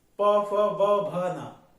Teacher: ऊपर नीचे दोनों के होठों को मिला के बोला जाता है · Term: ओष